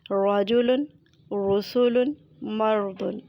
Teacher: رجل کے را پر زبر ہے اس لیے را کو پر پڑھا جائے گا۔ رسول کے را پر پیش ہے اس لیے رسول کے را کو پر پڑھا جائے گا۔